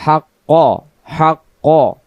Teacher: কফ অক্ষর জিহ্বার গোড়া থেকে মোটা করে পড়তে হবে